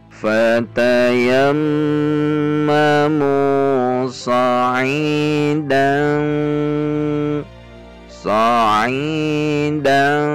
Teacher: Huruf yang berdekatan atau akrab dengan huruf nun, sehingga saat mengucapkan dengung pada fathah tanwin ini, posisi kita siap-siap pada makhraj ta, namun belum menempel, masih ada jarak sedikit, sehingga menyebabkan ini samarnya menjadi tinggi atau ikhfa a'la. · Tebal karena huruf ta memiliki sifat isti'la.